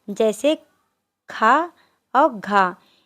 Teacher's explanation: महाप्राण में ज्यादा हवा निकलती है।